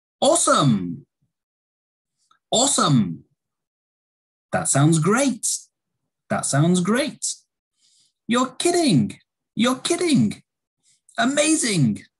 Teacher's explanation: generally these are going to have a rising intonation